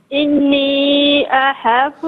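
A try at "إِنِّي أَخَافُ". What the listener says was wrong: اخاف نہیں اخاف، خواہ ہے نہیں، احا نہیں ہے، خواہ. خواہ پہلے پڑھے خواہ. ہا نہیں، خواہ خواہ. جی اخاف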